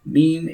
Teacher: Lips pressed together. The makhraj of meme is lips pressed together. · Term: shafatain letter